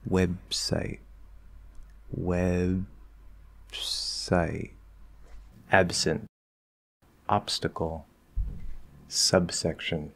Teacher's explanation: If the sound after the B in the middle that would stop is an S, then you're gonna go into the B, but when it gets released, there's going to be a little bit of a P sound instead.